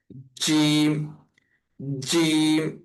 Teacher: জিহ্বার যে মাঝখানের অংশ এই জিহ্বার মাঝখানের অংশটা আমাদের মুখের উপরের অংশের সাথে লাগবে। অর্থাৎ আমাদের মুখের যে উপরের যে মাড়ির অংশ বা দাঁতের মাঝখানে যে এই মাড়ি অংশটা এই অংশ এভাবে টাচ করবে। · জিহ্বার মধ্যখান তার বরাবর উপর তালুর সঙ্গে লাগায়া